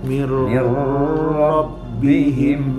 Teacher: Mir rabb, ro fathah berarti dia tebal.